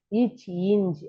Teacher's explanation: நாவுடைய இடை அன்னத்தின் இடை